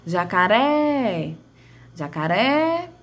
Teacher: a sílaba que mais se estende é a ré, ou seja, ela é a minha palavra, ela é a minha sílaba tônica, ela é a sílaba que junta a minha palavra, que eu chamo de sílaba tônica.